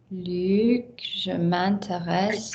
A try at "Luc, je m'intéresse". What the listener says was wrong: And I need a tighter Luc. I need a tighter consonant cluster. That's what's going to pull your French together. Tighter consonant cluster. Big vowel, smaller tight consonants. Luc, je m'intéresse.